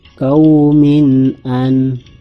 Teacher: Jadi cara membacanya jelas, ada kasrah tain bertemu dengan huruf alif. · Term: Bacaan ishar